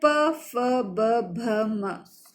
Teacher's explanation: प वर्ग में प, फ, ब, भ, म, तो ये ओष्ठ, होठ हमारे टच होते हैं इसलिए इसे हम ओष्ठ्य कहते हैं।